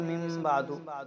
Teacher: اور یہاں تیسرا مخفی جس کو ہم اپنی زبان میں قلب یا اقلاب بھی کہہ سکتے ہیں، تو یہ بھی ہو سکتا ہے، جس کو دوسرے لفظوں میں کہہ لیا جائے کہ اخفاء مع القلب، یعنی قلب کے ساتھ میں اخفاء کرنا. یہ ہوئے نون ساکن کے بعد میں اگر با آ جائے تو وہاں غنہ کر کے پڑھتے ہیں